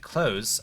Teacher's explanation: you're supposed to pronounce it close without the th at all